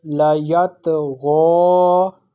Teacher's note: The pronunciation of ghain, it is pronounced from the top part of the throat